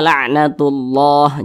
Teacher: kalimat Allah dibaca tebal nah dibaca tabkhim dibaca tebal · Maka dibaca karena ini kalimat Allah di belakangnya ada huruf yang memiliki tanda baca dhammah, maka dibaca tebal, maka dibaca la'natullah.